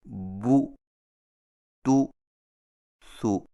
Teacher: عربی زبان میں چونکہ پیش کی مجہول آواز نہیں ہوتی، اس لیے پیش کی مجہول ادائیگی سے قرآن مجید کی عربیت میں خرابی لازم آتی ہے، اور اس سے بچنے کا طریقہ یہ ہے کہ ہونٹوں کو ذرا آگے کو بڑھاتے ہوئے مضبوطی سے گول کر کے پیش کو دبی ہوئی آواز سے ادا کیا جائے، مثلا بو، تو، سو۔